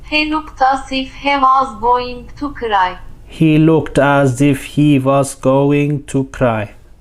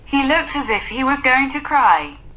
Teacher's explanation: each syllable is almost equal in length compared to English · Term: syllable timed language